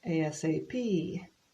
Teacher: again the emphasis is on the final letter